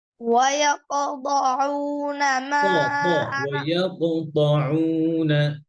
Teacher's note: কফের কলকলা আরো কম হবে, এত বেশি না।